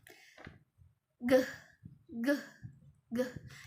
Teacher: ge ini merupakan plosif atau terdapat letupan yang bersuara. Letupan bersuara seperti pada kata gigi dan juga gulung.